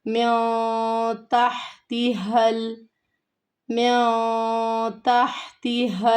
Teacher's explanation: تحتها اب یہ ہا گلے سے ادائیگی ہوگی، اور یہاں پر دوسرا ہا جو ہے یہ بھاری ہا ہے، سینے سے ادا ہوگا۔